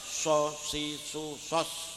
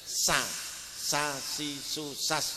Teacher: Jadi kalau tafkhim itu agak moncong berarti kalau tarkik itu biasa ya